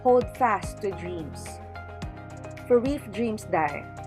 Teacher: Notice that the portions with the higher pitch are found in the first part of each line, and the lower pitches are found in the end of each line. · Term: intonation